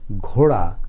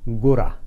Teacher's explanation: মহাপ্রাণ ধ্বনি উচ্চারণ করবার সময় যে বাতাসের একটু আধিক্য থাকবে প্রাবল্য থাকবে